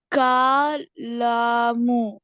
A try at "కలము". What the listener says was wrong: కా అని చెప్పలే, కలము. కలము అంటే పెన్ను. క దీర్ఘమేలే. కలము.